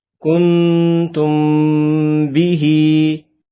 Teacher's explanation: number 2 اخفاء شفوی، میم ساکن کے بعد حرف با آ جائے تو میم ساکن میں اخفاء شفوی ہوگا، یعنی غنہ کریں گے